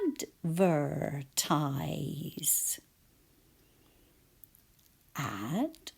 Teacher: Teeth on my bottom lip, and there's vibration.